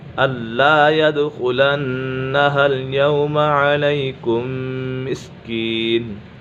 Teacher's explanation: دال کے اوپر قلقلہ ہو رہا ہے